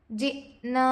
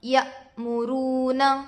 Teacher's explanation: حمزہ پر جزم ہے، حمزہ ساکنہ کے پڑھنے میں جھٹکا ہوتا ہے. الف سے پہلے زبر ہے، الف مدہ ہوگا.